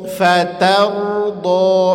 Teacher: Fa tipis, ta tipis, ro tebal. Sekali lagi fa tipis, ta tipis, ro tebal.